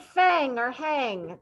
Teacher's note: does it have a big g sound at the end no there's a little bit of sound there